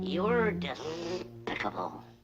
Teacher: Daffy Duck substitutes the s sound in despicable with the th sound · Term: lisp